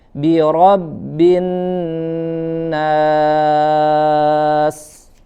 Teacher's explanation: nun bertasydid tidak hanya sekedar ditekan, tapi dia punya sifat gunnah ya, harus ditahan, dipanjangkan dulu gunnahnya. Birabbin, tidak tergesa-gesa.